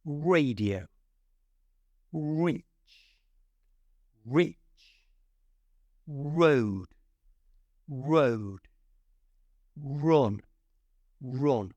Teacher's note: all that sound is coming from your lips it's not coming from your tongue